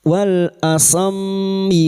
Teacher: wal mim yang bertasdid gunna musyaddadah dengungan selama 3 harakat